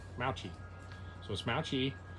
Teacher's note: the proper pronunciation is actually Mauchi, with infinite emphasis on the first syllable.